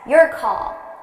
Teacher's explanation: So notice how call is a little bit louder and longer.